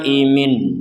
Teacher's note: Nun sukunnya dibaca dengan jelas karena tidak digabungkan dengan huruf mim